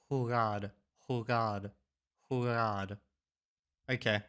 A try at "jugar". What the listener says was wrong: It's not an H like we have. Jugar. Okay. It's jugar.